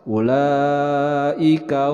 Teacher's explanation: mad wajib muttasil dibaca 5 sampai 6 harokat.